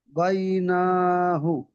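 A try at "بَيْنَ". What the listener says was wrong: টান দেবেন না বাইনা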